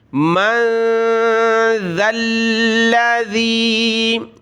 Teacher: من ذا الذی, نون ساکن کلرفل, ناک میں آواز پیدا کی, من. ذال پر ہم نے زبان نکالتے ہوئے پڑھنا ہے, ذال کو نرمی کے ساتھ, پھر ذال کو آگے لام کے ساتھ ملائیں گے.